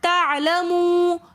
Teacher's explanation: تعلمون کے اندر بھی واو مدہ ہونے کی وجہ سے ہم تعلمو تھوڑا سا کھینچ کر پڑھ رہے ہیں. پھر وقف کی حالت میں واو مدہ کے بعد ساکن آ جائے گا، نون ساکن، تو اس لیے ہم اس کو تھوڑا سا زیادہ کھینچ کر پڑھیں گے.